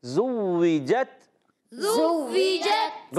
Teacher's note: اچھا یاد رکھیں کہ زا پر پیش ہے مگر زا کو واو سے ملانا ہے، زوی، زوی، اب واو کی ادائیگی ہونٹوں کی گولائی سے مگر واو کلیئر کرنا ہے